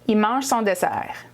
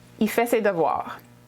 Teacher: we remove the L at the end of il. So it sounds like I. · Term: contract il